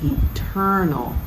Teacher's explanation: eternal with emphasis on the second syllable